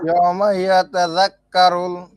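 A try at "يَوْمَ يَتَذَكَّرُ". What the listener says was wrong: এই যে আলহামদুলিল্লাহ অনেকটা হয়ে গেছে।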